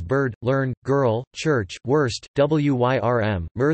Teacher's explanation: In Rhotic dialects of English, as in Canada and the United States, there are many words such as bird, learn, girl, church, worst, wyrm, mer that some phoneticians analyze as having no vowels, only a syllabic consonant. However, others analyze these words instead as having a rhotic vowel.